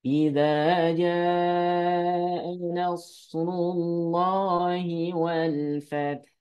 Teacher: Harusnya kan ja-nya dipanjangkan.